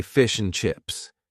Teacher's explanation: the word and is in a weak form and basically we only say n